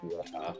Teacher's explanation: we don't say the R in the end